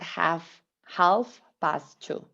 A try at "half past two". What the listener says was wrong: you don't really have to use uh pronounce the l it's